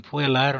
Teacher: Puelarum, em puelarum nós temos a segunda sílaba, é longa por posição, porque eu tenho o E seguido por dois L's. E a terceira sílaba, que é o lá, é longa por natureza, porque eu tenho uma vogal longa que está indicada pelo macron.